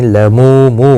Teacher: مو واو مدہ ہے، ایک الف کی مقدار کے برابر کھینچ کر پڑھیں گے